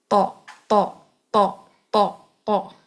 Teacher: طرف اللسان آپ کے اوپر کے جو سامنے کے دانت ہیں ان کے مسوڑوں سے لگے گی یا ان کے جڑوں سے لگے گی، دانتوں کے جڑوں سے، تو تو ادا ہوگا.